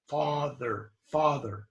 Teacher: It's deep in the tongue for American A.